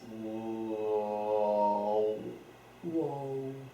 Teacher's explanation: Between an oo and an o.